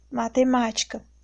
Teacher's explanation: A sílaba mais forte é o ma, é a antepenúltima. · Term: proparoxítona